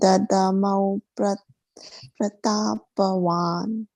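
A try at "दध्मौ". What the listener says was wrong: Not Dada. Dadmo. Dadmo. Dadmo. Say Dadmo. Dadmo. Dadmo, right? There's no A here, right? So that there'll be no emphasis there at all. Dadmo.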